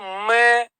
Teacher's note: मैं बोल के देख लो, मैं, होठ तो आपस में, मैं ओष्ठ तो है ही है, लेकिन क्या है, नासिका। मैं बोलेंगे तो नाक में कंपन होगा।